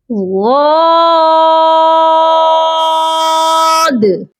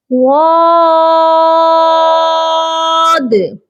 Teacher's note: Last میں جو دال ہے اس پر آپ کی آواز تھوڑی باؤنس ہونی چاہیے، جس کو کہتے ہیں قلقلہ. آپ نے تھوڑا سا یہاں پر قلقلہ بھی لازمی کرنا ہے.